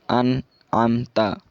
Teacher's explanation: bacanya itu harus jelas, tidak disertai gunnah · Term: idhar kholqi